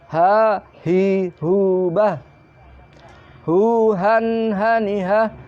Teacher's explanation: Yang selanjutnya adalah ha. Itu keluarnya juga pangkal tenggorokan.